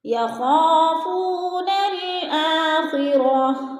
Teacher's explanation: اب درمیان میں جو الف ہے اس کے اوپر بھی کوئی حرکت نہیں ہے، زبر زیر پیش کچھ بھی نہیں ہے، تو ہم نے نون کو لام کے ساتھ ملا کر پڑھنا ہے، یعنی الف کو نہیں پڑھنا۔ الف لکھنے میں آتی ہے اور پڑھنے میں نہیں آتی۔ · یخافون الآخرہ، آ کے اوپر کھڑی زبر ہے، کھڑی زبر کو ہم نے حروف مدہ جتنا لمبا کرنا ہے